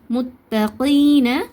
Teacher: ஏன் நீட்டி ஓதணும் இது வந்து சுக்குன் பெற்ற யாக்கு முன்னாடி கஸ்ரா வந்துச்சுன்னா இத நம்ம யாமத்தான்னு சொல்லுவோம். அதனால இரண்டு ஹரக்காத் நீட்டி ஓதணும்.